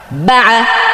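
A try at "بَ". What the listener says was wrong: আপনি যদি বা এভাবে বলেন, বা একটা তালে বললেন আপনি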